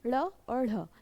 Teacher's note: जीभ उल्टी होकर तालुकों को स्पर्श और तुरंत नीचे आ गई